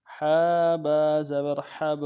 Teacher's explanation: با حرف قلقلہ میں سے جب با کے اوپر جزم آئے گا تو قلقلہ کریں گے۔ حا با زبر حب، حا کو گہرائی سے ادا کریں گے، حب۔